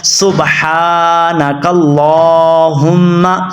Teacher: ہا کو موٹا پڑھنا ہے، اس لام کو بھی آپ نے لمبا کرنا ہوتا ہے